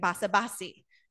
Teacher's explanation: So in basa basi, low and then high.